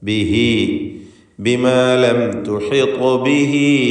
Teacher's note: ബിഹി എന്നതിൽ ദമീറിനെ മദ്ദുസ്സിലത്ത് സൂറ നൽകി ശബ്ദം ദീർഘം നൽകുക. 2 ഹറക്കത്തിൻ്റെ അളവിൽ ദീർഘിപ്പിക്കുക.